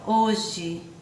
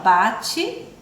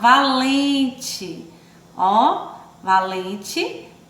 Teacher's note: palavras que terminam com a vogal é né mas quando nós falamos né quando a gente pronuncia é tem um som de ir